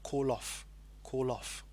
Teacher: notice the ending of call with the L and then the beginning of off of the vowel sound so again it's kind of a connecting sound